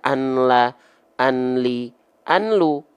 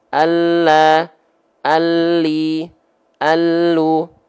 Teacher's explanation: yang dimasukkan adalah bunyi konsonan n ya dimasukkan ke mana dimasukkan ke huruf lam ataupun huruf ro yang ditemui setelahnya